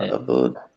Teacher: হামজা এবং আইন দুইটা তো কাছাকাছি মাখরাজের হরফ, হলকের শুরু এবং মধ্যখান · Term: হামজা আইন